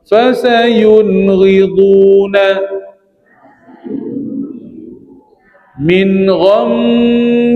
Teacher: Jelas saja nun mati terus beralih kepada baris yang berikutnya tanpa dipanjangkan, tanpa didengungkan, tanpa diqalqalahkan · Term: izhar